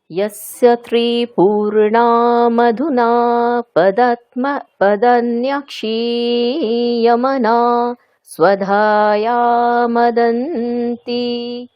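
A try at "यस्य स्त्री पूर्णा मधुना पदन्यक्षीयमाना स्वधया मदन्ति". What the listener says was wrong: আপনি আকারগুলো টানছেন না তো, দীর্ঘ উচ্চারণগুলো টানছেন না।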